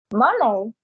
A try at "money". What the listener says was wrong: Okay, money, money, money. It's without the e sound in this case. Money.